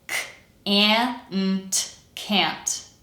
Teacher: because that a sound falls before a nasal consonant, most American accents will pronounce it as eh.